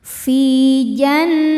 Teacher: Cara bacanya huruf fa panjang dua harakat. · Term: Mad thobi'i zohiri